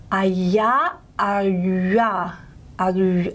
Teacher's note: this palatal glide, y, can have a lip-rounded component added to it. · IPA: j